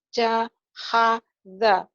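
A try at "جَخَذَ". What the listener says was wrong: Jahada benar itu? Iya, kho ya Bu ya. Karena ada titiknya. Kalau nggak ada titik betul ha. Jakhodha. Za ya. Jakhodha.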